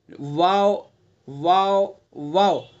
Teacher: होठों को संभल करके गोल करके हमें अदा करना है · واو متحرک واولین دونوں ہونٹ جب کہ پورے نہ ملے، دونوں ہونٹوں سے ادا کرنا ہے، پورے نہیں ملانے ہمیں